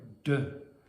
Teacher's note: you're using your tongue and the ridge behind your teeth. That's the place. Uh you're stopping the air briefly. That's the manner